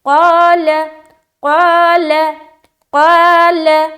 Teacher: ہمیں منہ بھر کر بولنا ہے اور الف مدہ کرتے ہوئے